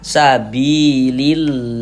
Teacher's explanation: Maka lafaz Allahnya ini kita baca tarkik, kita baca tipis. Huruf lam yang di tengah nih, huruf lam jalalahnya itu kita baca tipis.